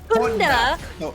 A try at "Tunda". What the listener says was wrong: So minus the H. It's just Tunda.